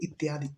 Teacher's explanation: जब हम य पढ़ते तो इ का य हो जाता है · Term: अर्ध स्वर